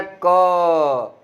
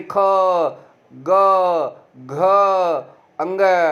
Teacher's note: तो क वर्ग कहाँ से मतलब उच्चारित होता है, कंठ से।